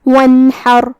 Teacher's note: ہم نون کو ظاہر کریں گے اور بغیر کوئی غنہ کیے حکم کو ادا کریں گے. یہاں حرف الحاء ہے، حاء کی ادائیگی حلق کے درمیان والے حصے سے ہے. · حاء کی ادائیگی حلق کے درمیان والے حصے سے ہے. آخر میں را کا حکم ہے تفخیم کیونکہ اس پہ جزم ہے لیکن اس سے پہلے والے حرف پہ مطلب حاء پہ زبر ہے تو ہم را کو بھاری آواز میں پڑھیں گے. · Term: اظہار